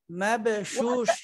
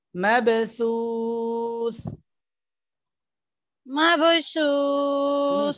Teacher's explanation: দুইটাই থা জিহ্বার আগা দাঁতের আগার সঙ্গে লাগবে মাবসুস مبثوث থাটা সুন্দর করে হয় না শিনের